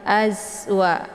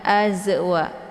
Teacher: Zai sifatnya adalah shafir. Jadi cara bacanya dialirkan saja dengan berbentuk desis angin yang agak jelas ya